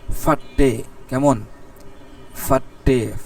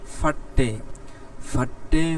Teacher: পের এর পর হলো হা, হাটা ভালো করে হবে না, হালকা উচ্চারণ হবে